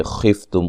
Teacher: خفتم خا کو موٹا ادا کریں گے، میم ساکن کا اظہار ہے۔